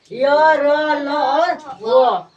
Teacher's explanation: इनका उच्चारण जो अंतस्थ व्यंजन होता है, इनका उच्चारण स्वर और व्यंजन के बीच का सा लगता है। · इन्हें बोलते समय मुंह के किसी भी भाग को पूरी तरह से स्पर्श नहीं करता है।